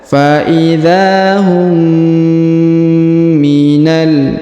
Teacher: Huruf mim bertemu dengan mim, kemudian mimnya bertasdid, maka ditahan dan ditekan, didengungkan 2 harokat